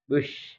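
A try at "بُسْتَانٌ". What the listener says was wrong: Bukan bush. Kalau bush, shin, tapi bus. Bukan bush, bus. Beda. Kalau itu shin. BUS, bukan BUSY. Bus.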